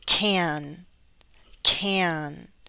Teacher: When it's affirmative, we hold out that vowel sound into the N. Can, can. Don't rush through the affirmative because people need to hear that is C-A-N, can.